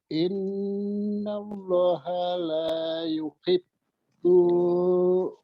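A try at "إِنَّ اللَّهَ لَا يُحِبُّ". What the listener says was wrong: Yuhibbu, bunya pendek. Bilang dari la yuhibbu.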